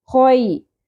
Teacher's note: خو کو پر کرتے ہوئے خو میں خردرا پن ہوتا ہے, خراش ہوتی ہے, اس طرح کی ساؤنڈ ہے.